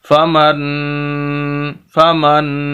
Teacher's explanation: نون کی آواز بالکل ناک کے اندر جا رہی ہے اور ٹھہر رہی ہے، اور اس کے اندر ہم واضح کر رہے ہیں کہ یہ نون کی آواز ہے۔ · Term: غنہ